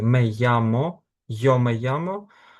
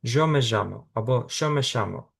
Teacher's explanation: в Аргентині, а також в деяких регіонах Уругваю і Парагваю можна почути варіант, коли вони кажуть замість звуку й, ж або ш. Тобто можна почути меямо, йомеямо, там в Іспанії і інших країнах Латинської Америки, а в Аргентині жоомежамо або шомешамо.